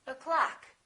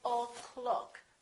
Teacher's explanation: the first syllable is reduced the second syllable is stressed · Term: uh sound